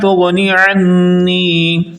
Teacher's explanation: عنی کے نون پر غنہ کرنا ہے، یعنی آواز کو ناک میں لے جا کر پڑھنا ہے